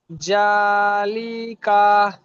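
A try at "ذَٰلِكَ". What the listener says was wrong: লিকা এ দুটা টান হবে না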